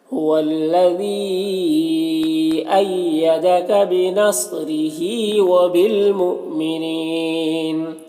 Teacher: صاد حروف مستعلیہ میں سے پر پڑھیں گے، را کے نیچے زیر ہے، باریک پڑھیں گے۔ ہا میں کھڑا زیر ہے، یہ یا مدہ کی طرح ہوتا ہے، اسے ایک الف کے برابر کھینچیں گے۔ · حمزہ ساکنہ ہے، واو کی شکل میں جھٹکا لگے گا